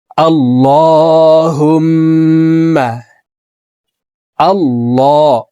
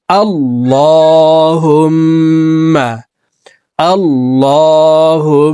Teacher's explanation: এলামকে মোটা করে অর্থাৎ ল বলে পড়বো